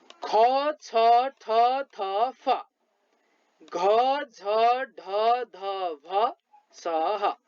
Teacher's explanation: मुखबाट बढी मात्रामा सास बाहिर निस्की उच्चारित हुने वर्णलाई महाप्राण भनिन्छ। हेर्नुहोस् है, अब यहाँ मुखबाट बढी मात्रामा श्वास बाहिर निस्किएर चाहिँ यी महाप्राण व्यञ्जन वर्णहरू उच्चारित हुन्छन्। · यी वर्णहरू उच्चारण गर्नुभयो भने बढी मात्रामा मुखबाट श्वास बाहिर निस्की उच्चारित हुन्छन्